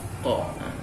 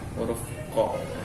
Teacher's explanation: Pangkal lidah ini keluarnya ya berada di 2 posisi, pangkal lidah serta di langit-langit mulut bagian belakang. Langit-langit bagian belakang berarti ya ini harus benar-benar kita bisa memposisikan betul ya hurufnya agar sempurna ya, yaitu huruf qa.